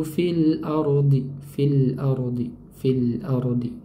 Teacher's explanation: Lamnya mengalir ya. Mengalir sedang karena memiliki sifat bainiah atau tawas. Mengalirnya aliran suara dengan aliran yang sedang.